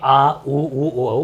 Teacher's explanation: पश्च भाग में आपके आ ऊ ओ बोला जाता है